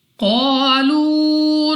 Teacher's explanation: قاف مستعلیہ میں سے ہے، موٹا پڑھیں گے منہ اور آواز کو کھول کر، الف سے پہلے زبر الف مدہ 2 سیکنڈ تک لمبا کرنا ہے، واو ساکن سے پہلے پیش واو مدہ، اس کو بھی 2 سیکنڈ تک لمبا کرنا ہوگا۔